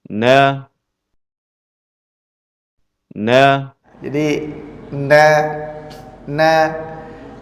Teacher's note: huruf nun keluar dari pertemuan antara ujung lidah dengan gusi bagian atas